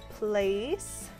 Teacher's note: you can feel your tongue lifting in the back when you say the last half of the vowel sound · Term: diphthong